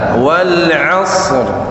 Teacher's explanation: Walayalin ashr, bukan ashr tapi ashr. Dihentak sedikit ketika hurufnya sukun yang bukan qalqalah. Jadi shad mati itu ada satu ketukan. Iya, bisa satu ketukan boleh, atau ditekan sedikit.